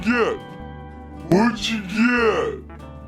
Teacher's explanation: notice he silences the letter T in both the words what and get.